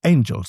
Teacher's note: Shakespeare breaks the pattern. He says angels. He hit that first syllable really hard.